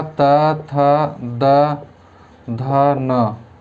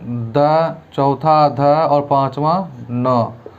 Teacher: प्रत्येक वर्ग का तीसरा, चौथा, पांचवा वर्ण घोष होता है।